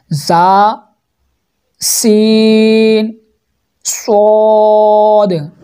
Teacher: ज़ुबान की नोक और दोनों दांतों के अंदरूनी किनारे से अदा होते हैं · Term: हुरूफ सफ़ीरिया सीटी वाले